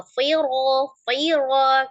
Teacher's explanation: Nah itu yang tebal ro, tapi jangan tebalkan fa-nya